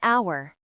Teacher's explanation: On n'entend pas le son H dans hour, donc on utilise N.